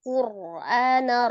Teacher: Lam sukunnya juga tidak memanjangkan kaf, tidak kal, tapi langsung kal Qur'ana ro sukun sebelumnya ada huruf berbaris dhammah ya. Dibaca tebal ro-nya.